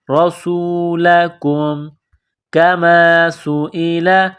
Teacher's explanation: را کے اوپر زبر ہے، را کو موٹا کرنا ہے. رسولکم کما سئل، کاف کو باریک کرنا ہے.